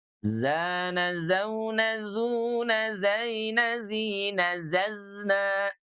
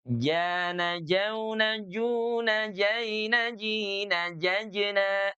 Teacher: Kalau huruf zai dia mengalir tuh, rokhawah. Kalau huruf jim ya dia syiddah dan punya sifat kol-kolah. · kedua-dua huruf ini adalah jahar. Ya. Jadi dia tidak ada nafas yang mengalir nih, ya. Tidak ja, Jana, jauna, juna, tidak, tapi jana, jauna, juna, jaina, jina, jajna.